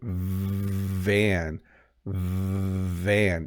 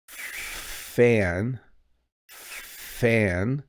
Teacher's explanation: And then now the second word, van, van. You can hear when I say van, there's like a vibrating sound. As I said, vibrating, you heard it as well.